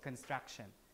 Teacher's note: that K is not aspirated. There's less aspiration